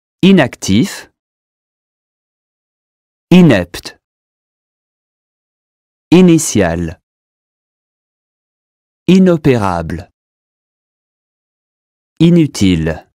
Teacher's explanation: the long E sound at the beginning of the word is perfectly correct when the IN or IM is followed by a vowel. Here are some examples of words where IN and IM are followed by a vowel.